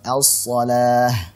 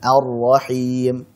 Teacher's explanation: Hukumnya idgham syamsi, melebur. Jadi lamnya melebur ke huruf berikutnya sehingga tidak terlihat lagi, tidak terbaca lagi.